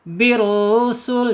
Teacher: Bir langsung ke ro penekanan di huruf ro. Kemudian rnya dibaca tebal karena harakatnya damah ya. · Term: alif lam syamsiyah, ro-nya dibaca tebal